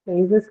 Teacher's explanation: it's a first sound of the stress syllable, hence it can be aspirated